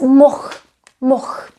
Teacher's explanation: the natives, including me, sometimes leave out the last letter, which is the L. Mohl is pronounced as moch.